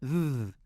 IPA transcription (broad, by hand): ð